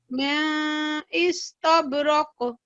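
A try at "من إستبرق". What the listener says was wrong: महसूस ना हो नून की आवाज, इजहार करना है, इख्फा नहीं करेंगे हम यहाँ पे। मिन इस्तबरक, ठीक है, मिन तब रॉक यहाँ पे कलकला करेंगे जी, यहाँ पे हम हल्का कलकला करेंगे, यहाँ पे हल्की जुम्बिश का, और यहाँ पे यहाँ पे कम करेंगे जुम्बिश का, और यहाँ पे हल्की जुम्बिश का कलकला करेंगे।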